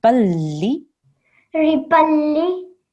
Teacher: we just pronounce one of the tanveen, so it's like a fatha, and you have to join it and harden the lam.